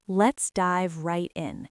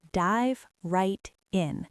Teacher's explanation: The V at the end of dive connects to the R of right, and the T of right connects to the I of in.